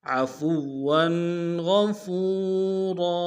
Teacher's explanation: وقت میں را کی تنوین کو الف سے بدل دیں گے